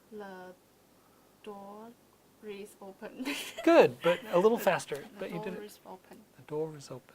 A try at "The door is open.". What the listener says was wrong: Good, but a little faster. The door is open.